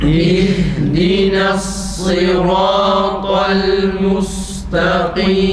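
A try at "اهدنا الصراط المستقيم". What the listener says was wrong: Mimin ötresi o çıkması arkadaşlar. O çıkıyor. Mustakim değil. Mustakim. Mustakim. Bir de ha'da hem sıfatına dikkat edelim ki ses aksın, sert bir şekilde hemzeyi ha'ya vurmayalım. Nefes kesilmesin yani.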